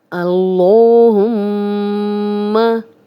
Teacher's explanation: اس لام کو موٹا پڑھیں گے، لام پہ کھڑا زبر ہے، 2 حرکات لمبا کریں گے، اور میم پہ شد ہے تو غنہ بھی کریں گے۔ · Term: لام موٹا